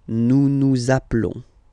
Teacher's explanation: final S doesn't exist, nous nous appelons